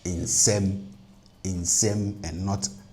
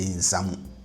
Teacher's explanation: So that u in the second word will cause the last vowel of the first word, which is a here, to be pronounced as the plus ATR version, which is e